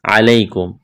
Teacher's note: یا ساکن سے پہلے زبر ہے، یا لین ہے، بغیر کھینچ کے پڑھنا ہے